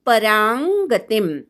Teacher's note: पराच्या अनुस्वाराचा ङ असा उच्चार करायचा. शेवटचा म अर्धा आहे.